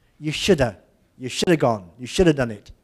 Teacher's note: of and have are both pronounced of if they're not stressed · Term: weak form